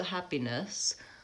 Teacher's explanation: check that in my videos but also I can see that that last syllable that's an upside down a that's a schwa